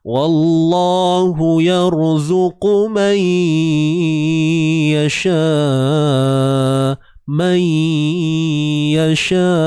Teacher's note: Idgham bi gunnah. Idgham ni memasukkan. Masukkan apa? Bunyi nun ke dalam ya.